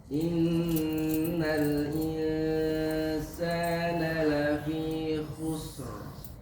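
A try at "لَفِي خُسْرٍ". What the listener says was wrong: Panjangin lagi. Desisnya. Khusr. Itu yang sukun ujungnya ro, ya ro. Karena pertemuan dua sukun di sini memang agak sukar, agak sulit dibaca. Khusr, khusr.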